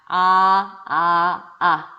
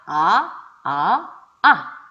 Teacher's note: 혀가 완전 바닥으로 깔리죠? 자, 얘 입술 오므리나요? 안 오므리나요? 안 오므려요. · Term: 저모음